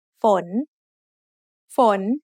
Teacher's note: ฝ น is a rising tone because we have a high class initial with a live syllable ending